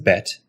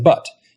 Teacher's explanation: your tongue goes forward for e and pulls back for a